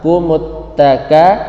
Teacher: ada huruf ta, maka mim itu dimasukkan ke ta